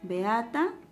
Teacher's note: Beata tiene la secuencia de 2 vocales abiertas, eso quiere decir hiato simple